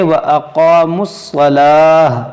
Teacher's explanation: اس گول تا کو ہا ساکنہ سے بدلیں گے